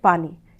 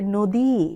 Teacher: ই প্রত্যয় যেটা সেটাতে দীর্ঘই যেটা সেটা একটু দীর্ঘায়িত করে বলতে হবে